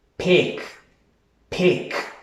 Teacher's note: esa letra I la baja de una manera tan corta que casi ni se note, que pareciera que estás pronunciando la letra E en español